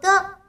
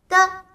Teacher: 发音时舌尖抵住上牙床，憋住气流后突然放开，气流从口腔蹦出，爆发成音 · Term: 声母的